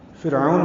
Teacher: فرعون میں را باریک ہے فا کی زیر کی وجہ سے